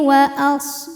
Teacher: shad punya sifat yang tidak memiliki lawan yang dinamakan dengan sifat shofir. Artinya ada desisan seperti suara angsa ya.